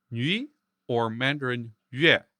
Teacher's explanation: A W-like sound with the tongue in the front rather than the back. You can hear it in French nuit or Mandarin yue. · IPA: [ɥ]